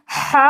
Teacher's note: بولنے میں دونوں لگ بھگ سملر ہیں، ہا ہی ہیں، لیکن اس کو دھیرے سے بولنا ہے ہا، تاکہ حلق کا نیچے والا حصہ یوز میں آئے، اور اس کو جب بولیں گے تو آواز بھاری کرنی ہے، ہا بولنا ہے، ہا بولنا ہے، تاکہ آواز آپ کے حلق کے بیچ والے حصے سے آئے